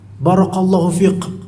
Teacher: Semua kaf itu dianggap qaf supaya kedengar lebih fasih, ada qalqalahnya.